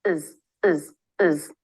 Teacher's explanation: to make the schah sound the jaw doesn't really need to drop it's just a quick quick vowel before the z sound to make the Z the tongue tip is forward and down